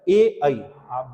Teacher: गले और जो तालु है उसमें आपका घर्षण होगा। तो ये कंठ तालव्य है।